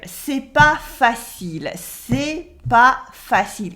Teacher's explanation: And she dropped the ne in the negative.